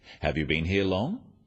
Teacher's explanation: questions that start with have you are yes/no questions so they have a rising tone